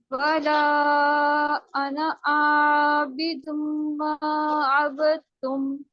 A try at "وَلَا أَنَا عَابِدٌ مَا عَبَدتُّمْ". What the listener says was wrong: یہاں پہ آئین کے آواز, آئین کا جو مخرج ہے یہ تھوڑا سا آپ کا پرومیننٹ نہیں تھا.